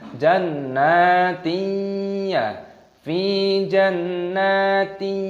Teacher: Kasroh tanwin bertemu dengan ya, idgham bi gunnah, dimasukkan dan disertai berdengung.